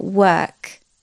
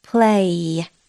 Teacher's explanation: So for example, work, there's no vibration in my throat. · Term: voiceless